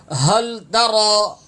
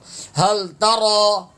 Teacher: ہا لام زبر ہل، سینے سے ادا ہوا